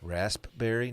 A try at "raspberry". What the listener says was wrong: It's because that's not how it's pronounced. It's a silent P. raspberry.